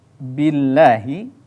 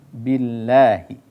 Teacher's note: ketika Billahi itu adalah dibaca tarqiq Dibaca tipis